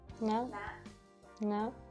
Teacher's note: High tone starts at a high pitch and rises very slightly.